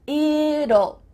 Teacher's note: when we say the contraction it will, we kind of add a little U sound before the L. It kind of sounds like U-L-L.